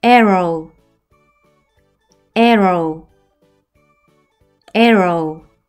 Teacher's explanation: W는 소리가 나지 않고 O의 장모음 소리만 나서 오우 소리가 나요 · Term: 이중 모음